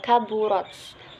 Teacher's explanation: terdapat hukum bacaan tajwid, yaitu ro tafhim, ro-nya dibaca tebal